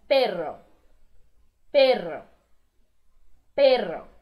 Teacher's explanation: o RR, ele vibra mais do que um R só